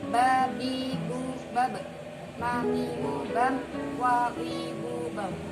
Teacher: 2 bibir antara bibir atas dan bawah bekerja sama untuk menghambat udara yang datang dari paru-paru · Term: konsonan bilabial